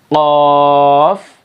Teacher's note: یہ قاف کو بھی موٹا کرنا ہے، اچھی طریقے سے حلق سے ادا کرنا ہے